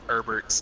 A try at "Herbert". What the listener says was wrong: It's Herbert. It's Herbert. No, it's Herbert. It's not Herbert. He's not a fucking herb. He's not a plant. He's a person.